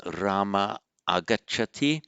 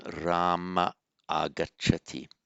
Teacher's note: All that happens, visarga drops. There you are. That's the rule. And it leaves a vowel hiatus, Rama agacchati.